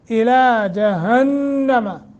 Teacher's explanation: गुन्ना करेंगे, नून मुशद्दत है, थोड़ा सा लंबा यानी गुन्ना कर लंबा करके।